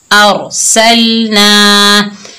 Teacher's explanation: रॉ साकिन है और इससे पहले ज़बर आ रहा है तो हम रॉ को मोटा पढ़ेंगे